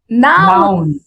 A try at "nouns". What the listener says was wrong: See, I hear the noun. That's great. But what about the S? Nouns. The zzz, that little zzz.